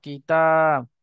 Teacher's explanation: তা আলিফ জাবার তা, আলিফের ডান দিকে জাবার আছে, আলিফ মাদ্দা হবে, আলিফ মাদ্দাকে এক আলিফ পরিমাণ টান দিয়ে পড়তে হয়। তা আলিফ জাবার তা, কিতাব।